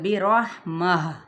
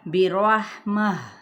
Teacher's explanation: پھر ہم نے گول تا جو تائے مربوطہ تھی اس کو ہا میں بدل دیا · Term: وقف